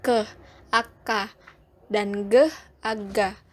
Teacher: tempat artikulasinya di velar atau langit-langit lunak